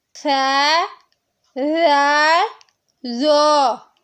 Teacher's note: ثا اور ذال باریک حروف ہیں، جبکہ ظا پر حروف ہے۔ اسے پر کر کے پڑھا جائے گا۔ · زبان کی نوک جب ثنائے اولیہ کے کنارے سے ٹکرائے گی، سامنے والے 2 دانتوں کے کنارے سے زبان کی نوک جب لگے گی تو یہ 3 حروف ادا ہوں گے۔ یہ تینوں حروف نرمی سے ادا کیے جائیں گے۔